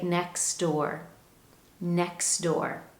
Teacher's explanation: it's much easier for us to drop that tee and simply say next door